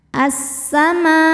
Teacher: alif lam syamsiah karena alif lam menghadapi huruf Syamsiah yaitu Sin maka alif lam tidak kita baca assamaa Ma mad wajib muttasil karena ada Mad Thobi'i bertemu Hamzah